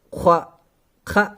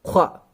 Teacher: ख्वा पुर है, हलक का ऊपरी हिस्सा